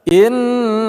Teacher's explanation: nun bertasydid kita gunakan atau kita dengungkan · Lafaz Allah kita baca secara tebal atau tafkhim